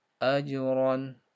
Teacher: Ajron, ro-nya dibaca tebal.